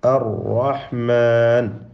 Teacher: നാവിൻ്റെ അറ്റം അവിടെ മഖ്റജിൽ ചെറിയ ഒരു ഇളക്കം സംഭവിച്ചുകൊണ്ടാണ് ഒരു റായിനെ തന്നെ നമ്മൾ ഉച്ചരിക്കുന്നത്. അത് ആ റായിൽ ഉള്ളതായ തക്രീറാണ്. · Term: തക്രീർ